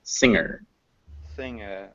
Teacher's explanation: the N and the G are not pronounced separately